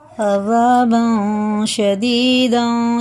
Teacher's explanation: एक अलिफ के बराबर नाक में ले जाके पढ़ेंगे, और इख्फ़ा की मिक़दार 1 अलिफ के बराबर होती है।